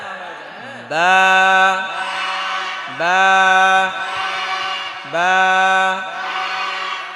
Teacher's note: ঠোঁট মিশাবেন আর ছেড়ে দিবেন, উচ্চারণ হয়ে যাবে কি?